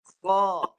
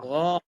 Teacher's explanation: Ni ini bunyi dia menggunakan nafas. Kalau satu lagi huruf ghain itu guna suara. Yang ni guna nafas. Nafas. Kemudian gabung dengan suara.